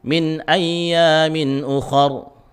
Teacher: Jadi kha ketika membunyikan pangkal lidahnya dinaikkan. Ini isti'la, harus tebal.